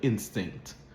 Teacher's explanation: there's that very clipped T sound at the end of instinct